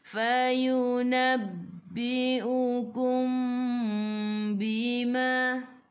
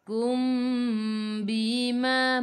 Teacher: Mim bertemu dengan ba, ikhfa syafawi, dengung 2 harakat. Nak rapatkan bibir boleh, tapi jangan tekan.